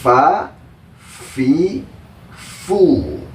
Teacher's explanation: tempat keluarnya itu dari ujung gigi seri yang di atas nempel ke bibir yang di bawah bagian dalam. Fa sambil ada suara desisannya.